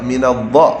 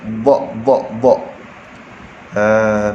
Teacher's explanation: lidah mesti kena duduk tepi tuan-puan sekalian